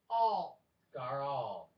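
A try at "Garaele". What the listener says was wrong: Why are you adding a G at the end?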